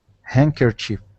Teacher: pronouncing that hand we the D here we say hankerchief handkerchief don't pronounce the d nope no D